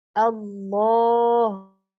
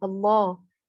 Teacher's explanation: Nah, yang terakhir H-nya. H-nya harus dialirkan, harus ada nafas.